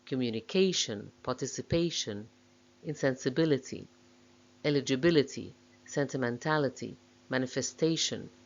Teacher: words with main stress on the fourth syllable